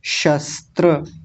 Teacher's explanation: तालव्य सकार और दंत्य सकार दोनों एक साथ आ रहे हैं, तो दोनों का अलग अलग उच्चारण ठीक से होना चाहिए।